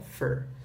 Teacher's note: esse for também ele é bem reduzido, tá? Ele não é um for tão forte assim, ele é um fur.